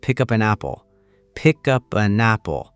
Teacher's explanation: The K at the end of pick flows directly into the U of up. The P at the end of up flows into the A of an, and the N at the end of an flows into the A of apple.